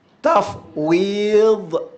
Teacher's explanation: Huruf dad ni ialah huruf sepanjang tepi lidah. Bermula daripada pangkal lidah hingga tepi hujung lidah, menekan ke geraham atas. Sama ada kiri atau kanan.